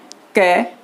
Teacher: अगर हम क का उच्चारण करेंगे क, तो श्वास यानी हवा कम मात्रा में बाहर आएगी, तो क आएगा अल्प प्राण में।